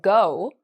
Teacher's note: sound or our G sound so for example go our tongue the back of our tongue is actually being used